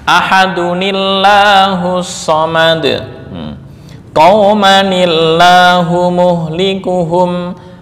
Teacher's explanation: Karena sebelumnya kasrah maka lafal lafzul jalalah dibaca tarkik.